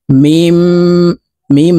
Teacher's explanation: এই মিম তাশদি মিমের সাথে গুন্না সহিত পড়বো নাকের বাঁশি থেকে আমরা গুন্না করে পড়বো